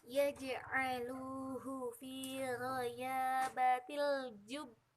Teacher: ketika ditasjidkan nanti bacanya ditekan dan dipantulkan gitu. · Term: huruf qalqalah